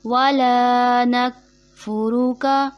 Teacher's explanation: زبر الف مدہ ایک الف کے برابر کھینچا جائے گا، جو کہ آپ کو پہلے بھی بتا چکے ہیں ویڈیوز میں، اس کو بغیر کھینچے پڑھ دیا جاتا ہے، جیسے وَلَا نَكْفُرُكَ درست ادائیگی نہیں، درست ادائیگی کھینچ کے پڑھنا ہے وَلَا نَكْفُرُكَ۔